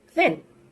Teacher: This is a voiceless sound. It's an interdental sound, and it's a fricative sound.